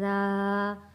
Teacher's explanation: الف سے پہلے زبر ہے تو یہ حروف مدہ ہے، را، ایک الف کے برابر کھینچ کر پڑھیں گے